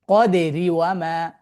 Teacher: মিলিয়ে পড়লে তো তখন র কাসর রিটা কি হবে, লাইট সাউন্ড উচ্চারিত হবে। তখন র এর ওন যেই হারাকাটা আছে সে পেয়েছে সেটাই সে উচ্চারণ করে পড়বে।